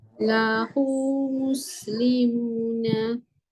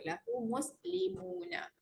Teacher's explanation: huruf mat akan hadir kecil. Jadi kita bacalah dengan kadar 2 harakat. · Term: mat silah qasirah